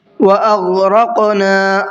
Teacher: راق میں قاف کو بھی منہ بھر کے پڑھنا ہے اور ساتھ ساتھ قلقلہ بھی کرنا ہے